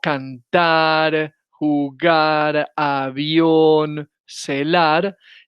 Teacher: las palabras agudas que llevan el acento prosódico en la última sílaba